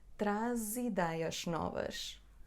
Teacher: Porque aqui ligamos traz ideias. Temos Z entre duas vogais. A e I. A, Z, I.